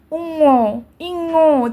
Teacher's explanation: দেখো নাকের মধ্যে থেকে হাওয়াটা পাস হচ্ছে, এই যে শ্বাসবায়ু পাস হচ্ছে, এর জন্যই আমরা কি নাসিক্য ধ্বনি বলবো।